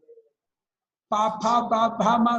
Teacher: ನಾಲಿಗೆಲ್ಲಿ ಬರೋದೇ ಇಲ್ಲ ಪಮ ಎರಡು ತುಟಿ ಕೂತ್ಕೊಳ್ಳುತ್ತೆ